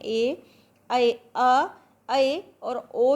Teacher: जिसके उच्चारण में मुख आधे से ज़्यादा खुलता है उसे अर्ध विवृत कहते हैं।